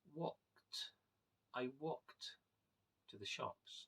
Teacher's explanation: walked to the shops so in actual fact in the word the E is completely silent and is replaced by a t sound